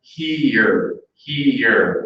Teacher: here to a native speaker of English is one syllable but if you listen to it slowed down here here it sounds like it's two syllables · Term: an extra vowel